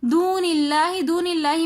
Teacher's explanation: दून इल्लाही में लफ्ज़ अल्लाह से पहले ज़ेर आ रहा है, तो इसलिए हम लफ्ज़ अल्लाह को बारीक करके पढ़ेंगे